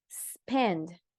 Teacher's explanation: Spend, no es spend. Solo el sonido puro de la S, porque está S y sigue por otra consonante. Si hay S vocal, ahí no hay problema, pero si es S seguida de consonante, no puede ir ese E que hacemos nosotros lamentablemente a veces, ¿verdad?